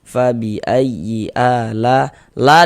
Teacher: dibaca panjang. Ini namanya adalah mad wajib muttasil. Namun pada awalnya itu namanya mad thobi'i.